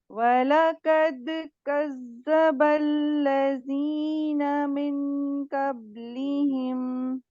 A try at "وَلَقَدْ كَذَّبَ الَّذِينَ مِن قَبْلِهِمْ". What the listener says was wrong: وَلَقَدْ، قاف کو موٹا کریے. من نہیں ہوگا یہ، میوں قبلہم. ایک دفعہ دوبارہ، میوں قبلہم.